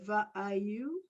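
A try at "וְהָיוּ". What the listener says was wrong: The, ha, you. You have to pronounce that H sound.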